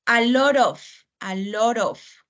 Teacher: Like an R, suena como si fuera una R y se pega un poquito esa segunda palabra con la tercera